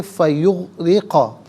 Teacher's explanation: فا یغرقا، یغرقا، اب یہاں فا علیحدہ ہے، یغرقا علیحدہ ہے، ملا کر پڑھیں گے فیغرقا۔ را کی نیچے زیر ہے، را کو باریک کر کے پڑھا جائے گا